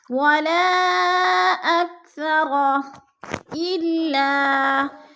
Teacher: 4 الفی مد ہے، 4 حرکات کے برابر ہم نے اس کو لمبا کر کے پڑھنا ہے. جیسے ولا أكثر إلا، اللہ پہ الف مدہ ہے، الف خالی سے پہلے لام کے اوپر زبر ہے تو الف مدہ، اس کو بھی ہم نے کھینچ کے پڑھنا ہے. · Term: مد منفصل